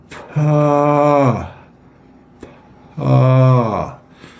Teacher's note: Okay, so one of the things that you should feel is there's a big amount of time between when you start making the p sound with your lips, and you feel your vocal cords vibrate.